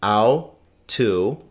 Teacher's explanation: Notice this is diphthong, diphthong. This is not four syllables. It's two because we have two diphthongs.